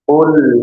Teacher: huruf lamnya sukun tidak dipantulkan jangan diqalqalah